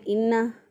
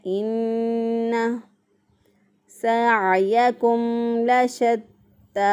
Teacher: एक अलिफ के बराबर गुन्ना की मिक़दार को नाक में ठहरा कर अदा करेंगे। अगर कोई इसको इस तरह अदा कर दे इन्ना, गलत हो जाएगा।